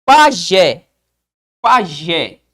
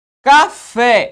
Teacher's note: Então isso é uma oxítona. É uma palavra cuja sílaba tônica ocupa a última sílaba.